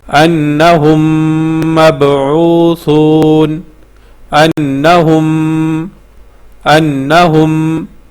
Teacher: تو یہاں پہ ہم غنہ بھی کریں گے ساتھ، تو اس کو پھر ایسے پڑھیں گے، انہم مبعوثون، انہم، انہم، مطلب ناک میں آواز ٹھہرائیں گے، تقریباً 1 سیکنڈ جو ہے ناک میں ہم نے آواز ٹھہرانی ہے، یہاں پہ غنہ کرنا ہے، انہم مبعوثون، ٹھیک ہے۔ · تو اسی کو ادغام شفوی کہتے ہیں کہ میم کے بعد میم آ جائے تو میم کو میم میں مدغم کرنا ہوتا ہے